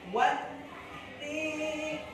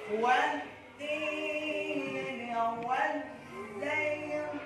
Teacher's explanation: Nah, di sini ada huruf ta, wat-tin. Di atas huruf ta terdapat tasdid, artinya ditekan, ditahan, dua ketukan. Wat-tin, dua harkat.